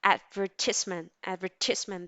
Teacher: the stress falls in the second syllable. It's ad, advertisement.